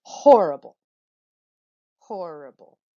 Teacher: syllables in this particular word it would be horrible because again the first syllable is getting the emphasis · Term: dactyl